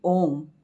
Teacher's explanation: ઓમના ઉચ્ચારણમાં પણ આપણે જોઈએ છીએ કે અ, ઉ અને મનો પણ આપણે દીર્ઘ ઉચ્ચાર કરતા હોઈએ છીએ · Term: સુદીર્ઘ સ્વર